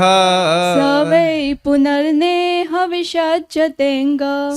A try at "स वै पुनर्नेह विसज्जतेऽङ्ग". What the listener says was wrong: एक त्रुटि है बस, जब भी आप भागवत में कोई श्लोक बोल रहे हैं तो एक तो स्केल ऊपर रखेंगे, ओके, और दूसरा स्केल मेंटेन करेंगे, तो बाकी सब अच्छा है।